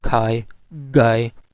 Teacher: back of the tongue is making contact with the soft palate